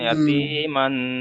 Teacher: তানবিনের আওয়াজকে নাকে তুলে একালি পরিমাণ গুণনা করে পড়তে হবে। সেই জন্য এখানে ইয়াতি মান, মান বলে এখানে গণনা করব, একালি পরিমাণ গণনা করব মান।